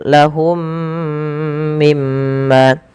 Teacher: Cara membacanya masukkan mim pertama kedua dan ditahan. Kemudian mim pada lafal yang kedua ada bacaan gunnah, ditahan suara mimnya karena dia bacaan gunnah. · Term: idgham mimi